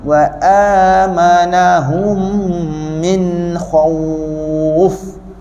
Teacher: Akhirnya masa kita sebut kha, ada perubahan, tebal ke nipis. Jadi kha tebalkan dulu kha. Jumpa waw kita moncong.